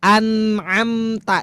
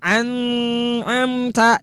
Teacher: Dua-duanya harus dibaca jelas. Dimunculkan bunyi en. Tidak boleh disamarkan. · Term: idhar